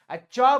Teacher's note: च बोल के देखना, तालु में सटेगा